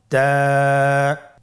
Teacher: জিহ্বার আগা সামনের উপরের 2 দাঁতের গোড়ার সঙ্গে লাগিয়ে উচ্চারিত হয়। · তা হরফটি বারিক হরফ এবং এক আলিফ টেনে পড়তে হবে।